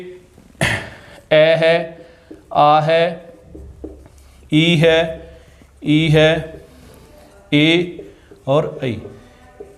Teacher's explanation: इनका उच्चारण करने से होठों की आकृति वर्ताकार नहीं होती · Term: अवर्ताकार